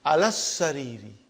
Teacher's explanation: I did not pronounce alif, I did not pronounce lam. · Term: shadda